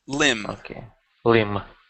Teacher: the B at the end of the word is silent